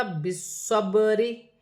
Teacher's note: را کے نیچے زیر کی حرکت ہے، را باریک پڑھی جائے گی